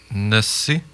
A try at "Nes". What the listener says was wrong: Nes. Le I est là à l'écriture, mais on le prononce Nes Pishum.